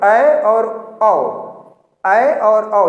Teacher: अर्धविवृत में हमारा मुंह आधा खुला होता है, पूरी तरीके से खुलने के बजाय आधा खुलता है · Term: अर्धविवृत स्वर